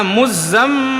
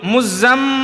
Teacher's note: جب نون اور میم پر تشدید ہو تو تھوڑا ناک میں آواز کو چھپا کر پڑھیں گے، جس کو غنہ کہتے ہیں۔